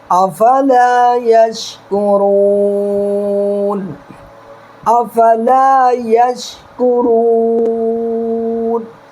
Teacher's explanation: نون پر دیکھیے زبر ہے، زبر کو نہیں پڑھنا ہے، نون پر ساکن دے دینا ہے